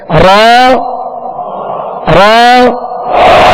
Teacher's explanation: है मुशा बहत अदा करनी है कामिल तकरार अदा नहीं करनी बस हल्की सी कपक पाहट हो जब रा को अदा करें